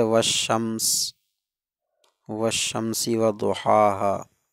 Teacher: والشمس ہے تو لام کا ادغام کر دیا گیا